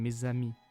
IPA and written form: me.z‿a.mi (mes amis)